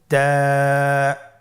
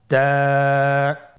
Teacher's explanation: তা হরফটি বারিক হরফ এবং এক আলিফ টেনে পড়তে হবে।